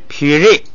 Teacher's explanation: 前边是升降调，本来是撇，但是前不降，你不能带那个降的尾巴，就只能升不能降了